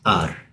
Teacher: the softer R, which is just the tongue just touches the roof of the mouth once